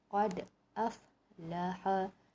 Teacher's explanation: Lantunan tu ada tapi kecil sahaja. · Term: qalqalah sughra